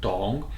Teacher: Tong is a third tone, so it's falling, rising